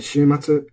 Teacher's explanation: Shimatsu is flat. There's no accent here.